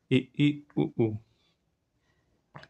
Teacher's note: ऐसी मुखाकृति के आधार पर देखेंगे, एक संवृत होता है, एक अर्ध संवृत होता है, एक विवृत होता है, एक अर्ध विवृत होता है। संवृत का मतलब होता है मुख कम खुलता है। अर्ध संवृत का मतलब होता है संवृत से ज़्यादा मुख खुलेगा।